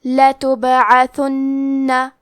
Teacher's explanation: حرف البا پہ جزم ہے تو ہم یہ حرف کو ہلاتے ہوئے یہ کلمہ کو پڑھیں گے. آخری میں نون پہ تشدید ہے تو ہمیں 2 حرف کے برابر نون کو پڑھنا ہے